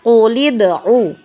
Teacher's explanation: Tapi karena dia berada di tengah-tengah kalimah, maka hamzah wasalnya ini kita tidak baca ya. Kita tidak baca, langsung masuk ya ke huruf dal sukun ya.